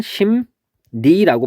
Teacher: 얘를 보면 심리라고 돼 있을 때 얘는 발음을 하면은 심니라고 발음이 됩니다. 그러면 미음하고 리을이 만나서 미음하고 니은으로 바뀌었어요